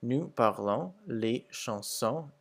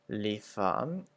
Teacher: the S's are pretty much not pronounced at the end of the words